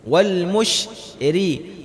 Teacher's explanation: Ra-nya dibaca tipis. Bagaimana? Turunin lidahnya.